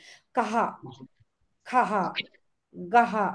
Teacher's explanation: त्याचा उच्चार जो आहे तो ह श्वासाचा सोडल्यासारखा होतो त्याचा उच्चार कहा खा गहा असं गहा विसरलास मी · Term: विसर्ग